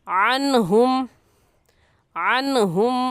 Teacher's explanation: इस नून साकिन पर गुन्ना नहीं करेंगे बल्कि जल्दी से पढ़ जाएंगे।